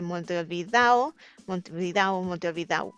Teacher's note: So when anything ends with ado, they will drop the d, and so it ends on ao, which in Spanish sounds a o. And when you put a o together in speed, the regular speech pattern, it turns into an au